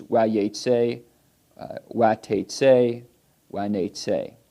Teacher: But yatsat is different. Yatsat, it keeps the longer vowel underneath the second root consonant.